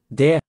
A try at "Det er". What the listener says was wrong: Det er, don't pronounce the T.